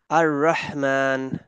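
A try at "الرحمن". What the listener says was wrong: আর রহমান। বুকে চলে যাচ্ছে সাউন্ডটা, গলায় ধাক্কা দেন, গলার মাঝখান থেকে, রহমান।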